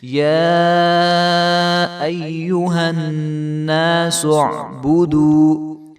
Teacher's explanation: یا کے اوپر کھڑا زبر ہے اور اس کے اوپر مد ہے، تو اس کو جو ہے ہم لمبا کر کے پڑھیں گے. یا ایہا الناس اعبدوا، یا ایہا الناس اعبدوا، سعبودو نہیں کریں گے، با کو لمبا نہیں کریں گے کیونکہ با کے اوپر پیش ہیں، تو بو نہیں کریں گے.